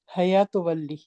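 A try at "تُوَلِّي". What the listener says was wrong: ہیا تولی, حیا نہیں, ہیا تولی.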